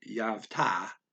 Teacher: he's saying Yav because he's stealing that V from the Av, and they're combining the A at the end of the one word and the A at the start of the other.